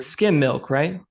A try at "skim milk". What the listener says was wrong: Skim with an M, skim. They skimmed it. Okay, it sounds like you're saying skin milk, and I'm like, I don't know what kind of milk skin milk is, but skim.